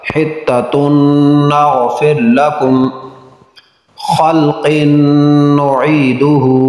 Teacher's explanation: نون تنوین کے بعد نون حروف یرملون میں سے ہے، ادغام غنہ کے ساتھ